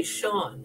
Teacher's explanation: next to a slender vowel an i or an e and s has an sh sound